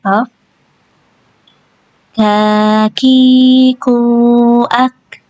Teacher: kaf itu dia mengeluarkan angin ya karena dia punya sifat hamz jadi dia wajib mengeluarkan angin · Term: huruf kaf